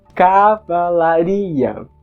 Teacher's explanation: no português europeu além de uma certa tendência de acentuar o começo da palavra o acento secundário vai cair na terceira sílaba antes da tônica · o acento secundário cai na primeira sílaba